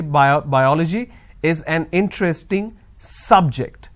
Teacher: i'm stressing on the first syllable so i say bio biology is an interesting subject i'm i'm